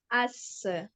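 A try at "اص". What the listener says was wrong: அஸ். Break அடிக்காதீங்க. ஏன் jerk? அஸ். அப்படியே ஸ்டாப் பண்ணுங்க. அஸ்.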